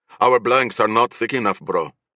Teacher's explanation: He rolled the R in, bro. Infusing it with an L sound.